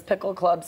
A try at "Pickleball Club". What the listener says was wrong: Pickleball. Yeah, you said Pickle Club.